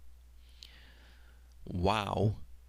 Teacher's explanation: you'll notice has a w sound not a Babylonian V sound